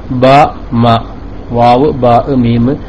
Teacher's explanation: ബാവ് മീം ഉച്ചരിക്കുമ്പോൾ രണ്ടു ചുണ്ടും തമ്മിൽ യോജിച്ചിട്ടാണ് വരുന്നത്